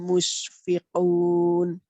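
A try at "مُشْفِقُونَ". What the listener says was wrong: Tafasyi itu ngawos ya. Musyfiqun. Ini kan lebih kesot kayaknya tadi. Jadi lidahnya melebar di dalam itu. Di dalam melebar. runcing itu kesot. Melebar ya.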